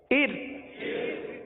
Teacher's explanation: اس را کو، ار والی را کو باریک پڑھیں گے، کیونکہ را ساکن سے پہلے زیر ہے، لہذا را کو باریک پڑھیں گے